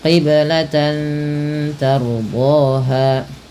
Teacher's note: Ra apabila didahului dengan huruf fathah maka dibaca dengan ra tafkhim. Ra yang dibaca dengan tebal